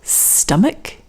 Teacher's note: and ch here is now a k sound muk stomach also the o over here is not o instead it's uh this is the same sound as in fun